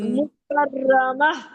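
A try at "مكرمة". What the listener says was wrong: مکرمہ نہیں، رو کو موٹا پڑے نا۔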